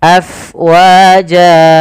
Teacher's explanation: Kemudian pada lafal fa, alirkan nafasnya karena fa itu harus ada angin yang kita keluarkan karena dia sifatnya hams, mengalirnya nafas